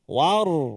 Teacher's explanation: tebal ra jaga. Jangan war tipis. War. Tapi jangan ajak waw jadi war, no wa.